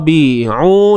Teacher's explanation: huruf ba baris bawah bi'u, sempitkan di tengah kerongkong kita.